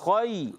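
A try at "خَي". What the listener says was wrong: ख़ई ज़्यादा नहीं खींचना और फिर इनको खींचते नहीं। ख़ई दो हरूफ की मिकदार तो लगेगी, वो ताख़ीर होगी, इतना टाइम हमने लेना है। ख़ई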